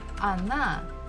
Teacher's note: So as we can see, we have O, it's one syllable, and another one is na, na. So this first letter O is not stressed. That's why I pronounce it as A.